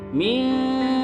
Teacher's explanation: Yang pertama ada pada kata mizahabi, nun sukun yang bertemu dengan huruf zal, maka dibacanya harus samar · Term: ikhfa